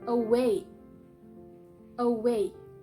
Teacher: the syllable way is stressed and the syllable A is unstressed